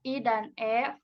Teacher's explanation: secara horizontal dibedakan menjadi vokal depan